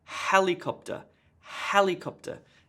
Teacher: emphasis on the first syllable the other syllables have less emphasis